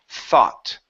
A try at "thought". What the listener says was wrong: Pronounce the T at the end. Thought.